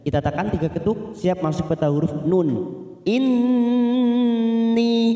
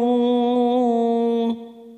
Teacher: Inni, ni kita panjangkan 2 harokat karena ada kasroh bertemu ya sukun mat tabi'i